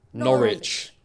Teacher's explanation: we will avoid the W sound